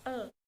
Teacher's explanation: merupakan bunyi konsonan renggang lebar sampingan lateral bersuara apiko alveolar